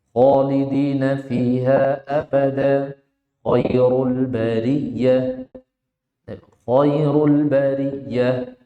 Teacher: Tafkhimkan, tebalkan, tinggikan pangkal lidahnya, naikkan. Naikkan pangkal lidahnya.